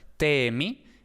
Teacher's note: Entonces, en hitita tenemos te-mi, mi es la desinencia, pero la raíz es te, e larga por EH1, es decir, la laringal ha alargado la vocal anterior